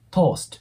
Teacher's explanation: ここでは二重母音になるんで、o▁のね、o▁と▁u▁の二つの母音が入るイメージになります 。なので、to▁ですね。toast▁ではなく▁toast▁っていう感じで、ちょっとうの音をイメージしてもらうといいかなと思います。もう一度発音すると、I▁usually▁spread▁butter▁on▁my▁toast。